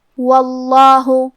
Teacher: کیونکہ حرف الواو پہ زبر ہے لہذا اس کے بعد لفظ الجلالہ مطلب کلمت اللہ کے لام کو تفخیم سے مطلب موٹی آواز میں پڑھنا ہے